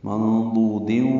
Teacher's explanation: ضاد کو لمبا کریں گے، دال ساکن ہوگا، قلقلہ ہوگا، ملانا ہوگا، ادغام ہوگا.